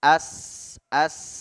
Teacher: huruf Sin mengalir ketika di ee sukunkan ya mengalir